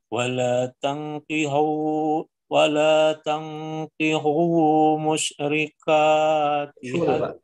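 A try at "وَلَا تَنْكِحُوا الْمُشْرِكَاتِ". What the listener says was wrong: dalamnya di sini tangkihul ada lam Pak kul ada lamnya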